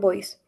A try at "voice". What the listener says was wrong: Okay, voice. Remember, don't say B. Voice, no. Yeah, we say voice. if you say with 2 lips, you are saying this B, boys, chicos, right? But if you say v,